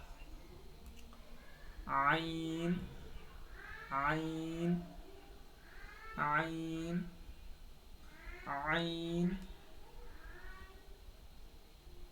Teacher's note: हलक का जो बिल्कुल दरमियानी हिस्सा है यानी के बीच का जो हिस्सा है वहां से आईन अदा होगा · حلق کا جو بالکل بیچ کا حصہ ہے، عین بالکل وہیں سے ادا ہوگا. جو عین کی ادائیگی ہے وہ حلق کے بیچ والے حصے سے ہوگا